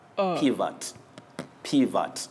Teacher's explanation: this O takes the weak sound and the weak mid-central sound